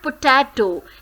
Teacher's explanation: So, ta is stressed syllable here.